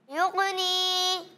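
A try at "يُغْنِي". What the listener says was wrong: अच्छा, युगनी में थोड़ा सा गैन है ना, इस पर आवाज़ को जमाएं वरना तो कलकला हो जाएगा। जैसे युगनी, युग युग नहीं, युगनी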